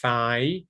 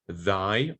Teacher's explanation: very few words in English, but they're there, that contrast the voiceless and the voiced interdental fricatives